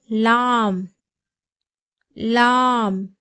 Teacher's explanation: நாவின் நுனியிலிருந்தும் மேல் முரசில் இருந்தும் லாம் உடைய உச்சரிப்பு வெளிப்படுகிறது · லாமுடைய மஹரஜ் பிறப்பிடம் நாவின் நுனியிலிருந்தும் மேல் முரசிலிருந்தும் லாமுடைய உச்சரிப்பு வெளிப்படுகிறது. அதாவது நம்ம நாக்கினுடைய நுனி நமக்கு 2 கடவாய்ப்பல் இருக்கு இல்லையா, அதில் முதல் கடவாய்ப்பல்களுக்குள்ள மேலே உள்ள முரசில படும் பொழுது லாம் என்ற உச்சரிப்பு வெளிப்படுகிறது.